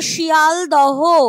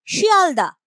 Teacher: উচ্চারণে লোভ পেয়ে গেছে এই যে শিয়ালদহ হ টা ছিল এখানে সেই হ টা কিন্তু নেই উচ্চারণের সময় বাদ পড়ে গেছে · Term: হ লোপ